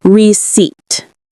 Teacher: Receipt has 2 syllables. We stress the second one. The P is silent.